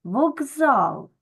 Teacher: ми букву К вимовляємо дзвінко як Ґ вокзал Так чому Тому що у нас дзвінки з він сильніший